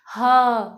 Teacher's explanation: ह को भी अगर हम प्रोनाउंस करते हैं तो इसमें भी कंपन महसूस होती है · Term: घोष